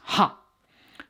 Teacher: the last sibilant is ha which is the sound of pure breath